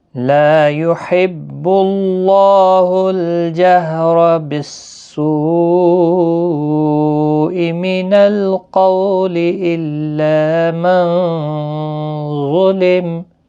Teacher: لا الف مدہ ہے، ایک الف کی مقدار کے برابر کھینچیں